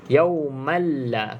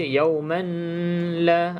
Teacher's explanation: Ke dalam huruf lam bila gunnah, tanpa dengung. Jadi masuk terus. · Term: idgham bila gunnah